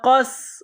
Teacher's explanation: سین کو باریک کرنا ہے، سین میں سیٹی کی آواز پیدا کرنی ہے